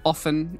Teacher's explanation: I would say often without the T